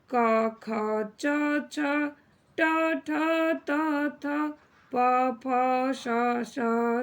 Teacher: जिन वर्णों के उच्चारण में नाद की जगह केवल श्वास का उपयोग होता है उन्हें अघोष व्यंजन कहते हैं। जिनकी संख्या कुल 13 होती है, जो इस प्रकार है।